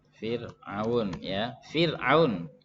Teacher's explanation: Kenapa roknya dibaca tipis? Sebelumnya kasroh ya.